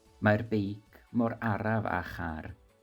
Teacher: Word for word, it's the bike is as slow as a car. Notice that in this sentence, car is pronounced as char, k to ch.